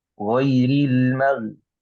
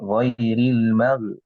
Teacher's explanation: Karena mag ini bukan qalqalah, maka usahakan agar tidak mantul.